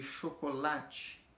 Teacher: Ou ela é paroxítona, que a força dela está na penúltima sílaba